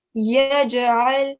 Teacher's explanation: if the Jim has got a sukoon or a jazm on top, we need to give it a jerking sound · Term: kalkala letters